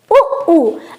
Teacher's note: यानी उ और उ का उच्चारण स्थान ओष्ठ है।